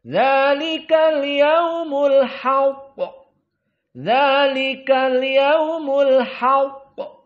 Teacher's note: qofnya di sini di saat disukunkan harus dalam keadaan Qalqalah Kubro lebih jelas qalqalahnya Kenapa karena qf dalam keadaan musyaddadah dan di saat disukunkan dalam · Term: qalqalah kubra